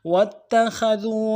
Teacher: آلِهَةً لَعَلَّهُمْ يُنصَرُونَ وَاتَّخَذُوا واو کو تا کے ساتھ ملانا ہے، تا کے اوپر تشدید زور دیں گے